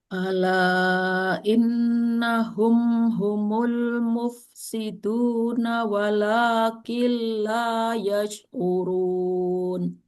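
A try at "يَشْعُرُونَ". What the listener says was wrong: Ya-nya ditipiskan lagi, Bu. Yash'urun.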